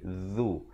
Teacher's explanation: Hujung lidah keluar di antara dua gigi.